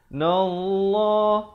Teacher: Lafz jalalah dibaca dengan tebal 2 harakat